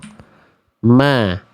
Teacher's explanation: Huruf mim ini keluar dari persentuhan antar kedua bibir. Jadi menyentuhkan antar kedua bibir.